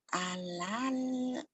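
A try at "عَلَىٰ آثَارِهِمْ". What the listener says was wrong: Kok alal? Kalau alal ala asarim, jangan alal kan nggak dalamnya. Ala hanya panjang ada berdiri. Ala asarihim.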